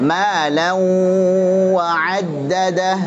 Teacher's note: Alladzi jama'a malan aktif khayshum dan juga wawunya. Baik, idgham bi gunnah, tanwin ketemu dengan waw, aktif khayshumnya, gunnahnya dan juga apa? Asy-syafatainnya.